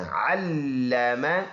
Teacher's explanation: لام مشدد ہے، شد کی وجہ سے جماؤ سختی کے ساتھ پڑھیں گے